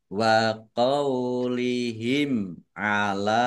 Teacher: mim sukun bertemu dengan huruf ain, bacaan izhar safawi, dibaca jelas